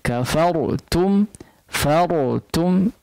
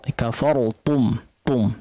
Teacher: ra-nya ditebalkan kemudian ta-nya ditipiskan ya, jangan jadi ta, kafartum tum ya.